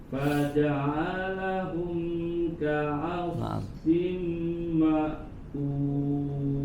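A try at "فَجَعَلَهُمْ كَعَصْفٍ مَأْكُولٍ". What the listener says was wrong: Kurang ditahan. Ka'asfim di situ ditahan.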